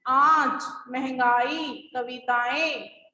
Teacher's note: Okay, अनुनासिक का प्रयोग चंद्र बिंदी के रूप में किया जाता है। जिस ध्वनि के उच्चारण में वायु नाक और मुंह दोनों से बाहर निकलती है उसे अनुनासिक कहा जाता है।